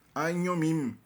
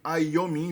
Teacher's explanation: como tem nasal, a consoante I vira nasal, né? Então vira, em vez de aiomim, vira ainyomim.